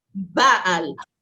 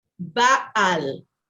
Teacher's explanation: The accent is on the ba, Baal. I would write it, Baal.